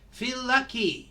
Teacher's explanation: we pronounce the L once